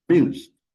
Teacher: the a in amuse is super short just amuse it's not pronounced very uh loud just almost silent